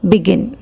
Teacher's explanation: सो इस पे स्ट्रेस, ये बिगिन 2 सिलेबल का है और बी पे ज़्यादा स्ट्रेस नहीं है, बट GIN गिन पे स्ट्रेस है